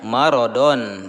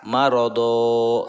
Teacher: pada akhir kata karena waqaf atau berhenti itu dibaca Mad atau dibaca panjang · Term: Mad iwad